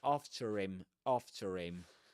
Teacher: the final R in after is pronounced . So you say after him, after him and the R